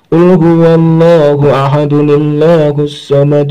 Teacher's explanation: tanwinnya ini berubah menjadi nun yang dikasroh. Jadi bukan dun tapi du, tinggal rumahnya doang. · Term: Nun bikoyah